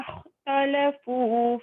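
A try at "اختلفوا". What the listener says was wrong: Jangan tolafu. Talafu. Ta nipis. Kha tu pastikan dia tebal tau.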